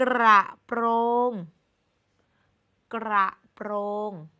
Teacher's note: ทั้งสองพยางค์ทั้งคำว่ากระและคำว่าโปร่งเป็นคำควบกล้ำรเรือทั้งคู่